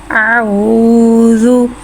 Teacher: वाव को एक अलिफ यानी 3 हरकत के बराबर खींच के पढ़ेंगे। वाव को होठों की गुलाई के साथ अदा करके पढ़ेंगे। वाव साकिन से पहले पेश आ रहा है, वाव मद्दा हो रहा है, लिहाजा वाव मद्दा को एक अलिफ यानी 2 हरकत के बराबर खींच के पढ़ेंगे।